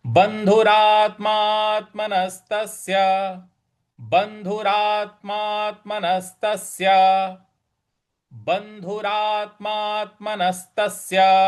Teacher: यहाँ ब के बाद जो न है, न पर थोड़ा सा हमें आघात देना है। उसके बाद र पर जो आ की मात्रा है वहां पर हमें आघात देना है, थोड़ा बल लगाना है।